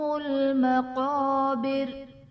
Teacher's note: زرتم میں را ساکن سے پہلے حرف پر پیش ہے تو را کو پر پڑھا جائے گا۔ مقابر میں قاف حرف مستعلیہ ہے، پر پڑھا جائے گا۔